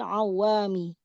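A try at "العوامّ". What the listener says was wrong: Awam. Awam. Iya, awam. Bukan awam. Awam. Mimnya yang pakai tasdid ya awam. Mm-mm. Awam.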